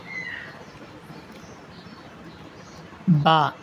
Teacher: دونوں ہونٹوں کے گیلے حصے کے ملنے سے با ادا ہوگی